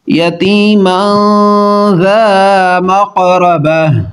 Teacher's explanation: نون تنوین کے بعد زال حروف اخفا ہے، غنہ کر کے پڑھیں گے